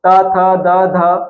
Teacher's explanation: आप उच्चारण करके देख लीजिए, जैसे प फ ब ये होठ से उच्चारित होते हैं, त थ द ध, अगर इनका उच्चारण करते हैं तो ये कहा जाता है दांत के पीछे टच होता है